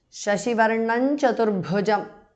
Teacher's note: Anuswara changes to the nasal of Chavarga.